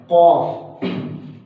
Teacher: ये हलक के ऊपर वाले हिस्से से अदा होता है